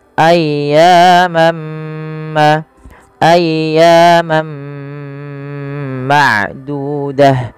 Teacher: masukkan tanwinnya kepada huruf mim dan diganti bunyinya. Awalnya ayyaman menjadi ayyamam, ayyamam ma'dudah, ya ditahan dan diganti suaranya huruf mim, maka dinamakan dengan idgham.